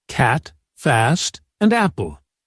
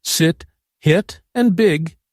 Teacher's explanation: Notice how wide your mouth opens for the a sound. Now compare that with sit, hit, and big, where your lips stay more relaxed, and your tongue stays high.